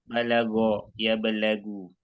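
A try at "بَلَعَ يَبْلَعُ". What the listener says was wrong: Itu bukan balagha. Bala'a. Yablau. Pakai ain kan? Bala'a bukan balagha. Bala'a yablau.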